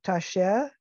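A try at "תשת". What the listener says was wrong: That's a T at the end. Well, it's a Taf.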